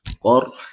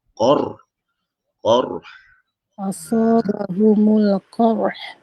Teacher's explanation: Yang penting bunyi lantunan sebelum akhir tu bunyi tebal, qa. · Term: Ra tu tebal